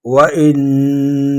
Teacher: وإن نون مشدد ہے، ایک الف کی مقدار اس میں ٹھہریں گے